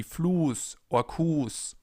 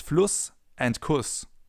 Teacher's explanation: The sound they make is the same, but it all comes down to the length of the vowel preceding the sharp S or the double S.